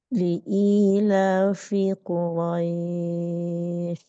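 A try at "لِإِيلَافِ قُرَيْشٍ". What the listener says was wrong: di akhir itu kepotong atau memang apa ya Bu ya kurang jelas Suara Shin di akhirnya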